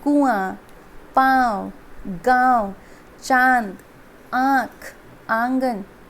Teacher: अनुनासिक में ये स्वर, इसमें स्वर और न का साउंड ये दोनों साथ में सुनाई देगा